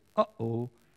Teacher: a glottal stop like when you say uh-oh that little sound in the middle